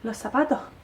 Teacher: a veces aspiran la S. Por ejemplo, dicen los zapatos, y no pronuncian la S final, ¿vale?